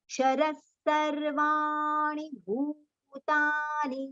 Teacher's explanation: bhu long, ta long, ni short